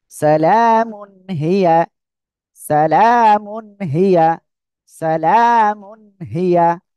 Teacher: মিম দুই পেশ মুন, সালামুন তানবিনের পরে ইজহারের উপর হা, স্পষ্ট আকারে পড়বো